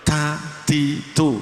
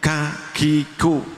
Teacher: Hames itu mengeluarkan nafas, ngelos nafas, artinya nafasnya banyak yang keluar.